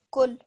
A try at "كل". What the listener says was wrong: Again, try to stress the lam a little bit because it's got the shadda. Kul.